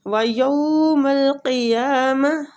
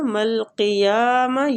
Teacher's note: یا کو کھینچیں گے، قاف مستعلیہ پور پڑیں گے